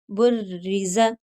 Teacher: तो ज़ेर जिस रॉ के नीचे हो वो बारीक पड़ी जाती है।